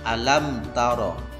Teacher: Cara membacanya adalah mim dibaca dengan jelas. Jadi tidak boleh misalkan mim nanti dibaca mendengung, karena hukumnya adalah izhar syafawi.